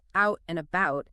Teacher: the vowel sound in words like out and about can sometimes rise slightly in the mouth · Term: Canadian vowel shift